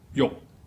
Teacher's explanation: In Middle Chinese or Cantonese, it also fits the pattern, but it's pronounced as yok. It's an entering tone that ends with a K.